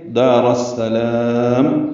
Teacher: میم پہ رک جائیں گے، ہونٹ بند ہو جائیں گے · را کو السلام کی سین سے ملا دینا ہے